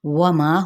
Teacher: ہونٹوں کی نا تمام گولائی کے ساتھ واو کی حرکت کو ادا کرنا ہے